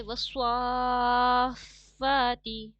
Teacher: سواد کو تھوڑا پر پڑھیے گا